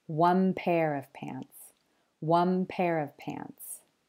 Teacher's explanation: sometimes an N sound changes to an M sound at the end of a word when the following word starts with a P, B, or M sound